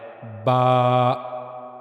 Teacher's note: دونوں ہونٹ جب آپس میں ملتے ہیں اور دونوں ہونٹوں کا اندرونی حصہ جو منہ کی طرف والا ہے وہ جب آپس میں ملتا ہے تو تب با ادا ہوتا ہے